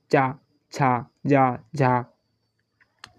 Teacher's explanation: जब मुख द्वार को बंद करके इस प्रकार बोलते हैं कि हवा स्थानों को कुछ रगड़ती हुई चलती है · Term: स्पर्शी व संघर्षी व्यंजन